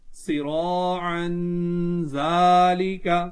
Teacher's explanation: صراعا ذالک، یہاں اس میں الف ہے، اس سے پہلے زبر ہے تو الف مدہ ہوگا، تنوین ہے، تنوین کے بعد زال ہے تو یہاں پر اکفا ہوگا، گننا کر کے پڑھیں گے